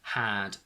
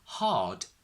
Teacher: we go from the short sound in had to the long sound in hard is because we have an R written there.